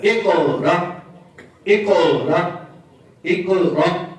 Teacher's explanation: قاف میں قلقلہ اور حمزہ میں جھٹکا. اقرا اقرا اقرا، حمزہ میں جھٹکا اور قاف میں قلقلہ.